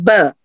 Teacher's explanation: दोनों होठों के अंदरूनी गिले हिस्से जब आपस में मिलते हैं तो बी अदा होता है